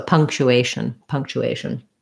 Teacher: And then at the end, there's basically no vowel. If there's going to be any vowel, it'd be like a shin or a shun, a reduced, unclear vowel.